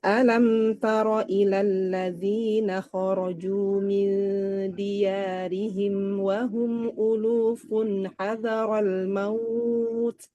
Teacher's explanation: dinaikkan suara di maut ya karena pertanyaan